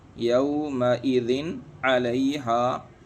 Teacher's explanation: 2 زیر کی تنوین کو ظاہر کر کے پڑھیں گے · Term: اظہار حلقی